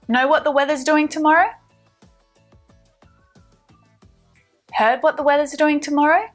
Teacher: our intonation is going up to signal the question